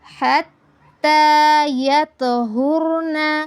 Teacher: تَقْرَبُوهُنَّ حَتَّى يَطْهُرْنَ حَتَّى اب تو پر تفخیم بھی ہے اور قلقلہ بھی ہے۔ یعنی تو کو ہلا کر بھی پڑھنا ہے اور پر بھی پڑھنا ہے